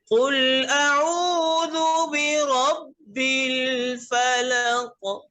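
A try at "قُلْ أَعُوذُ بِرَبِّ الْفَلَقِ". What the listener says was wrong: फलक। ज्यादा कर रहे, कम करे इसको, कलकले को कम करे।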